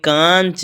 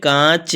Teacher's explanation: कांच हम बोलेंगे तो यह नाक माने नाक से उच्चारण होगा